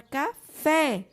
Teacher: sua sílaba tônica é a última